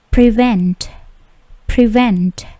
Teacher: Bunyi T-nya juga memantul